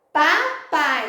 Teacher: a gente chama de semivogal porque na pronúncia houve um sonzinho mais fraco